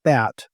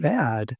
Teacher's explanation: in the word bat, the vowel is actually quite short. But in bad, it's lengthened